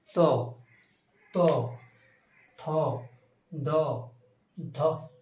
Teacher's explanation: দেখো আমাদের জিভ কোথায় স্পর্শ করছে, কি দাঁতের গোড়ায়, একদম দাঁতে নয়, একটা দাঁতের গোড়ায় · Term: দন্ত ব্যঞ্জন